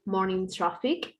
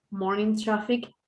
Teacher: one is the stress level because it's louder is longer and the second syllable is the unstressed one because it's shorter quieter and lower